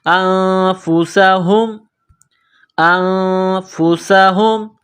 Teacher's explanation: منہ سے ہوا نکالنے کی طرح صرف اس ہا کو پڑھتے ہیں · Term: گول ہا